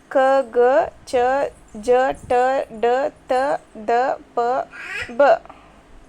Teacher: ಕಡಿಮೆ ಉಸಿರಿನಿಂದ ಉಚ್ಚರಿಸಲ್ಪಡುವ ವ್ಯಂಜನಾಕ್ಷರಗಳನ್ನು ಅಲ್ಪಪ್ರಾಣಾಕ್ಷರಗಳೆನ್ನುವರು